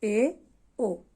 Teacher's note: आगे अर्ध संवृत यानी जिनके उच्चारण में मुख द्वार आधा बंद रहता है